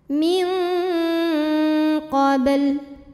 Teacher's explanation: Cara bacanya, bunyi nun dibunyikan samar-samar, siap-siap menuju huruf qaf, disertai bunyi dengung. Nah, jadi dari nun sudah menyentuh makhraj huruf qaf yaitu pangkal lidah naik. Ya. Jadi bunyi dengungnya besar. · Cara membacanya dipantulkan dengan pantulan yang kecil. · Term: ikhfa ab'ad, qalqalah sughra